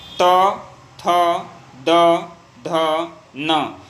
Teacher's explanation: हमारी जीभ क्या होती है, दांत पे आके सटती है, तब जाके आवाज़ निकलता है।